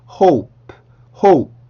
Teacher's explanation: 단어 자체만 발음을 할 때는 hope, hope 이렇게 공기를 조금 터트리는 소리를 내주시는 게 좋습니다. 자, 그래서 hope는 hope가 아니라 hope, hope, hope 이렇게 입술 모양을 두 번 움직여서 만들어 주셔야 돼요.